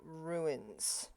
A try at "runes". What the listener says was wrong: Why do you keep adding an I? Rune, not ruins. ruins regularly.